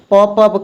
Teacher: प का उच्चारण स्थान क्या होगा? ओष्ठ होगा। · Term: ओष्ठ व्यंजन